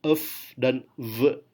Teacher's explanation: Ketika kita mengucapkan f dan v, sebetulnya gigi kita sedikit menghalangi udara. Maka udara hanya bisa keluar lewat sela-sela kecil di antara gigi dan bibir. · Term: fricative